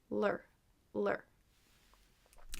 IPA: lɚ